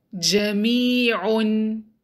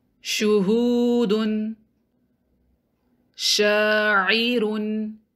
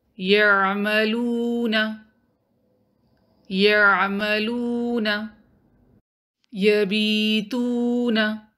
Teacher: When middle part of the tongue touches or goes close to the middle part of the roof of the mouth, that's when jim, sheen and ya are pronounced. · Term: makhraj of jim, sheen